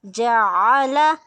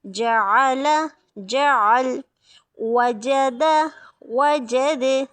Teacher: آئین وسط الحلق سے ہے